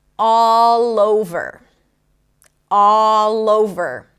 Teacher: And what happens here is really interesting, because what happens is that the consonant of the first word becomes the beginning of the next word, right? It connects to the vowel in the next word. · So I could say all over and then kind of like stop my breath in between, but all over makes it smoother, makes it sound like it's one word